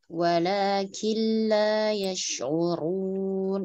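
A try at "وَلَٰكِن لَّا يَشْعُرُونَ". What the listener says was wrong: Jangan diayun, jangan ditekan.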